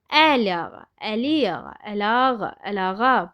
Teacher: Əlağa sözü mürəkkəb söz olsa da vurğu son hecəyə düşür